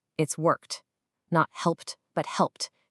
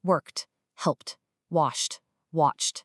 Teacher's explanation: the e, d at the end is going to be pronounced as a sharp t · It's this really clean, sharp finish with no vocal vibration at all.